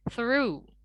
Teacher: dalam bahasa Inggris, R itu tidak dilafalkan secara rotik atau secara bergetar seperti dalam bahasa Indonesia. Jadi kita harus pronounce R itu dalam bahasa Inggris seperti kita cadel gitu ya, kita bilangnya R gitu.